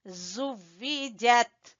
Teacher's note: ذال کو نرمی سے اور زا، ٹھیک ہے؟ اس پہ زور دیں گے اور اس میں تھوڑی سی سیٹی کی آواز آئے گی